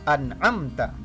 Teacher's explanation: an'amta tidak boleh dibaca dengung melainkan dibaca dengan sangat jelas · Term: izhar halqi